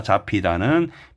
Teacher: 잡히다는 비읍 히읗이 피읍으로 되는 거죠. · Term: 축약